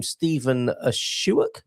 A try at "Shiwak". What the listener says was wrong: Very close. It's like a hard K at the end. So it's Shiwak.